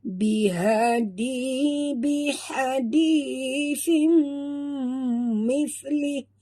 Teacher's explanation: tanwin baris dua bawah bertemu dengan mim, tutup mulut, dengung, idgham ma'al gunnah